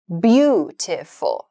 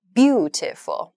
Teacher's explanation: the first beat of the word beautiful, which has 3 syllables, 3 beats, should be emphasized. It should be stressed. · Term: stress the first syllable